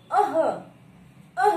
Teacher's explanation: विसर्ग का जब हम उच्चारण करते हैं, तो हमारा कंठ और हमारा उर दोनों के बीच में ये वाला जो स्थान होता है, जिसमें छोटा सा खड्डा टाइप में होता है, यहां से जोर लगता है ध्वनि को बोलने में। इसका उच्चारण करते समय यहां से हमारा जो ध्वनि है वो यहां से उच्चारित होती है। · विसर्ग जो होता है इसे कंठ ध्वनि कहा जाता है, क्योंकि जब हम इसका उच्चारण करते हैं तो इसका उच्चारण करते समय हमारे कंठ से ध्वनि बाहर आती है, और कंठ में ना कह करके अगर हम इसे काकल्य या ओरस्य कहें तो भी ये सही माना जाता है।